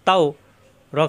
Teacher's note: আবার ওর সাথে, তাও লিনে হরফ, তাও র খাড়া জবর র, র মোটা খাড়া জবরের জন্য একালিপ টান